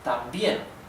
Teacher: the stress in the intonation is in the last syllable